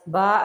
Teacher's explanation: زبر کے بعد الف آ رہا ہے تو با کو تھوڑا سا کھینچ کے ادا کر لیں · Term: الف مدہ